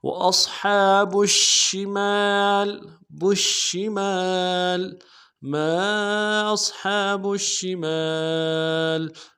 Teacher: صاد کو موٹا ادا کریں گے، ہا کے اوپر کھڑا زبر ہے، ایک امداد میں کھینچیں گے